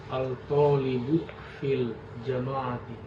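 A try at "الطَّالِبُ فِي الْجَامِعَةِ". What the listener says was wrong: Nah, jamaah tidak, di sini bukan jamaati sebenarnya, karena dia alifnya di setelah ja ya. Al-talibu fil jami'ati.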